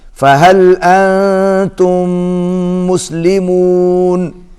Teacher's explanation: میم جو ہے اس کے اوپر تشدید ہے، غنہ ہوگا